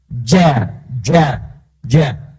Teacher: Ja itu hurufnya huruf hentakan. Ja, jadi dari dalam, infijar, jadi dari dalam dikeluarkan.